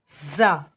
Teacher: زا جو ہے اس میں سیٹی کی آواز آئے گی